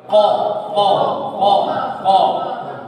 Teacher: तो वो छोटी जुबान है ना, वहीं उसके पीछे वाले हिस्से से कॉफ अदा होता है।